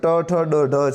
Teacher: તાળવાથી થોડી આગળ મૂર્ધન્ય તરીકે ઓળખાય છે